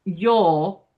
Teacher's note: you wouldn't hit that R because the next word is a consonant